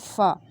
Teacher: جب آگے والے دو دانت نیچے والے ہونٹوں کے تر حصے سے ٹچ کریں گے تو فا حرف ادا ہوگا